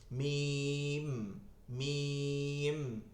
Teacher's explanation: মিম দুই ঠোঁটের শুকনা জায়গা, এই দুইটা মিলে যায় আর কিছু না।